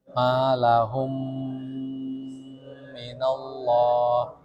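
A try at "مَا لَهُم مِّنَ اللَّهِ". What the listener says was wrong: Tapi terlalu lama itu.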